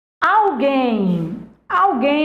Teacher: a tonicidade recai na última sílaba ela é uma oxítona